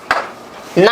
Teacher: उसके उच्चारण नाक से हवा निकलती है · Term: नासिक्य ध्वनि